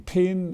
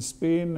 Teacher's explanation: there's aspirated P in pin and there's unaspirated P in spin